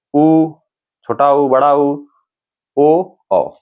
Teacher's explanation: इन चार स्वरों का उच्चारण करते समय मुख गोल हो रहा है वृत्त के आकार का हो रहा है तो ये वृताकार हो